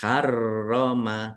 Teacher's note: Rnya dibaca dobel ada tasdidnya harrom ditekan dan ditahan.